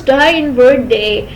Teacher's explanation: Airstream is also stopped before being released. It is voiced consonant because it is produced with vibration of vocal cords.